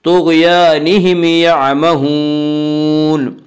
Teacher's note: اس کا قاعدہ یہ ہے کہ اگر میم ساکن کے بعد میم اور با کے علاوہ کوئی اور حرف آئے تو وہاں پہ اظہار ہوگا، اس اظہار کو اظہار شفوی کہتے ہیں، یعنی میم کو ظاہر کر کے پڑھیں گے یعمہون۔ یہاں پہ یعمہون میں مد عارض وقفی ہوگا۔